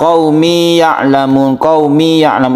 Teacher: qaumi ya'lam itu tidak boleh ditasydidkan. Ya bertemu ya sebelumnya kasroh. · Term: mad tamkin